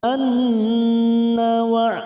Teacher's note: nun yang bertasdid gunnah musaddadah, kita tekan 3 ketuk